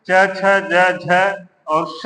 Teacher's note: च छ ज झ और श है, इनका उच्चारण स्थान तालु है